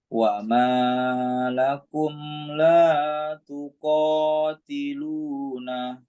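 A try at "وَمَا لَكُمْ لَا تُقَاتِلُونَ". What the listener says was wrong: Hati-hati ma-nya agak kepanjang dikit. Wa ma lakum la tuqatiluna.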